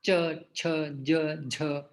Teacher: च वर्ग का होता है तालु, मतलब हमारी जिह्वा तालु को स्पर्श करती है। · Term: तालव्य